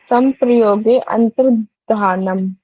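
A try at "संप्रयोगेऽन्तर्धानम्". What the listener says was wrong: अंतर्धानम, पर यहाँ पे अ नहीं बोलेगा, अगर आप इसको इकट्ठा बोलेंगे। संप्रयोगेंतर्धानम, योगेंतर, योगेंतर, अंतर नहीं बोलेगा, योगेंतर धानम, ठीक है। संप्रयोगेंतर धानम, गुड।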